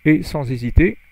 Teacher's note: liaison, H is not pronounced, enfin, you don't, it's not a H aspiré.